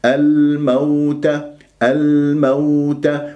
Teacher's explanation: لأنه جاء بعدها حرف متحرك ميم مفتوحة فقط، ليست مشددة، ولما تكون اللام قمرية يجري فيها صوت فترة زمنية بسيطة